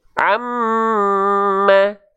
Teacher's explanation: Nun bertasydid, mim bertasydid ditahan 2 harokat. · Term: gunnah